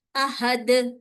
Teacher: میں تنوین کو ہٹا کے عارضی سکون دے کے میں دال کو ساکن کر رہی ہوں. تو میں نے یہاں پہ اسٹرانگ کلکلا کرنا ہے احد.